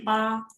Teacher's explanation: Jadi B itu dibaca P biasa aja, nggak ada H-nya, jadi bacanya pa.